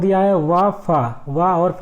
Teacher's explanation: वा फा को बोलने अगर बोले तो ये दांतों के निचले ओष्ठ तथा ऊपरी दांतों से इनका उच्चारण स्थान होता है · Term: दंतोष्ठ